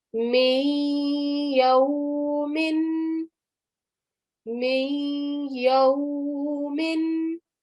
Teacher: we are going to give a slight 2-second nasal sound there.